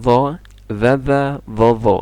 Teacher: ini dua-duanya lidah nempel ke gigi atas gigi seri atas tapi yang do lidahnya nempel ke e lidah tengahnya diangkat berikutnya